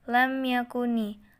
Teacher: ada mim sukun bertemu dengan ya dibaca jelas tanpa mendengung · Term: izhar syafawi